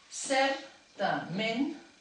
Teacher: puc sentir una síl·laba tònica a cert i una altra síl·laba tònica a ment